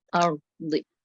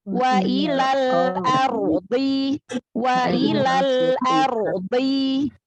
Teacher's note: Dhad punya sifat isti'la, punya sifat itobaqo. Maka isti'la itu terangkat, angkat pangkal lidahnya. Itobaqo itu terkepung. Jadi suaranya itu seperti bulat. Ardi. Ro-nya juga kan di sini tafkhim ya, karena ro sukun sebelumnya fathah.